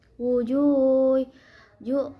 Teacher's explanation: karena ada waw sukun sebelumnya domah dibaca panjang 2 harokat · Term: mat tobi'i